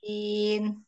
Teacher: To, dua harokat, kemudian sinnya, lima harokat.